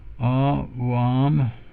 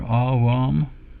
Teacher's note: 2 long ahs there